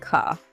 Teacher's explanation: that R at the end of words often gets dropped